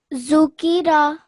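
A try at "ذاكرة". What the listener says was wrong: I know why you said za, why you think it might be a za. It's actually not a za. A za would not be joined up.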